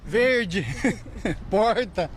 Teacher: O R é grande demais. Este é o R retroflexo, o popular R caipira.